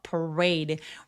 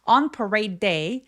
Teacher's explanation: parade 할 때 드와 day 할 때 d가 같은 소리를 한 번만 발음해서 parade. re처럼 R로 시작하는 소리들은 입술 내밀고 re라고 해주세요.